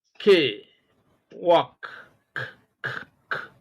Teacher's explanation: When you look at walked, the last consonant K is a voiceless consonant.